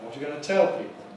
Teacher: you must put the nucleus on tell